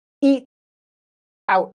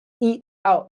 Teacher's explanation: So the t you stop the sound really quickly.